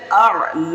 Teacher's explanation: لام پہ کھڑا زبر ہے تو اسے ایک الف کے برابر کھینچیں گے · اعلی، تو حمزہ اور عین، حمزہ کو بغیر کھینچے پڑھیں گے اور حمزہ کی تحقیق کر کے پڑھیں گے